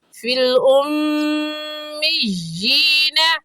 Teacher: میم مشدد ہے اور میم مشدد پر ہمیشہ غنہ ہوتا ہے